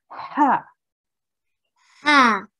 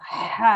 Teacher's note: it's coming from the middle of your throat. So it's like ha, you're kind of making a noise in your throat. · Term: ha sound